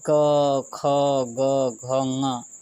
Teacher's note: कंठ यानी गला, ये समझ लीजिए कि ये मनुष्य का जो है गला ये है। ये क, ख, ग, घ, ङ ये कंठ से बोला जाता है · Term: क वर्ग